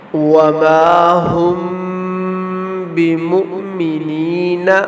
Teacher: اور دوسرا میم ساکن کا جو قاعدہ ہے وہ ہے اخفاء شفوی۔ میم ساکن کے بعد حرف با آ جائے تو میم ساکن میں اخفاء شفوی ہوگا، یہاں بھی غنہ ہوگا